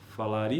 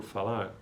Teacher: PE, português de Portugal, agrega uma vogal paragógica